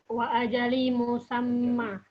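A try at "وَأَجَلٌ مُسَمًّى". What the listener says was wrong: Nah, selama nggak ada huruf jar, nggak usah dikasrohkan. Dinormalkan saja. Apa normalnya isim bunyinya kalau normal? Ajalun, lun tanwin. Wa ajalun. Wa ajalun. Musamman. Musamman. Tanda tanwinnya nempel di atas mim musamman.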